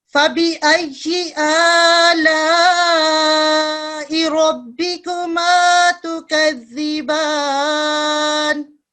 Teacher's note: इसमें फिर रॉ को थोड़ा सा थिक पढ़ते हैं